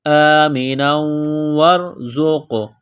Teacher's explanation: زا میں سیٹی کی آواز پیدا کریں گے